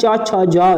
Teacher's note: तो ये च वर्ग तालु से उच्चारण होता है